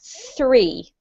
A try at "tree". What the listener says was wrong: Now, this time we have to do a t sound instead of a th sound. So we've got tree. Now I want you to say three, tree, three.